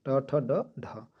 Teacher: ट वर्ग जो है कि मूर्धन्य का व्यंजन है